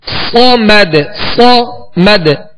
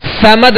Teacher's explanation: صاد کو سیدھی کی آواز میں سختی سے ادا کریں گے اور پر پڑھیں گے، باریک نہیں پڑھیں گے